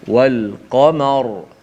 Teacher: Sebelumnya berbaris atas, maka dibaca dengan tebal ra itu.